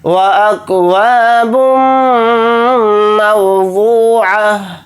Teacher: تا کو ہا ساکن بنا کر پڑھیں گے حالت وقف میں